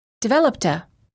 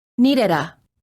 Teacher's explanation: The final T and D sounds are much easier to pronounce if they're connected to the vowel that follows it. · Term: Linking